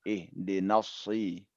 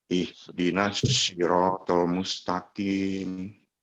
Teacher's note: Lebih ditebalkan. Dia sama dengan sa ya, bismillah, tapi dia ditebalkan.